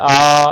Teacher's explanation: लंबे समय तक आप आ का उच्चारण जब करेंगे तो आ की ही ध्वनि होगी, उसमें चेंजेस नहीं आना है